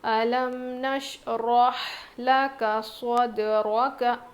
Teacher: صاد، اس میں صاد، سین اور زا میں سیٹی جیسی آواز ہوتی ہے، یعنی زبان کی نوک کو نیچے کے دانتوں کی جڑ میں لگانے سے ادا ہوتا ہے، لیکن صاد کو ہم موٹا پڑھتے ہیں. اور دال پر نا کیا ہے؟ قلقلہ ہوگا، کیونکہ دال حروف قلقلہ میں سے ہے